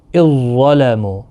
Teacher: یہ ذال جو ہے نرمی کے ساتھ پڑھا جاتا ہے، ظا سختی کے، یہ حروف مستعلیہ کا حرف ہے